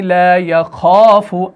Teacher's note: یہ الف موٹا, کیوں؟ کیونکہ خا آ گیا, خا موٹا ہے